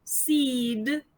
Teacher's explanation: When it is followed by a linis consonant, it is still long, it is considered long, but it is a bit shorter than when it is in final position